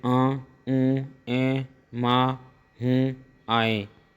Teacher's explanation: अनुनासिक चिन्ह व्यंजन नहीं है, स्वरों का ध्वनि गुण है। अनुनासिक स्वरों के उच्चारण में मुंह और नाक से हवा निकलती है